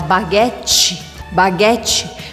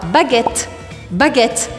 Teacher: Assim como o L é curto e rápido em francês, o T também. Então, ao invés de você falar baguette, baguette, você vai falar baguette.